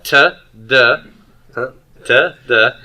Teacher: And then dentals. With dentals, I have the tip of the tongue, back of the teeth. That's the d, t, and th sound.